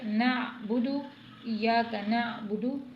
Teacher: عین کو حلق سے ادا کرنا ہے